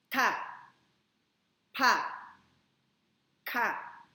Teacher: Remember that yung T, kapag aspirated, di ba may H sound?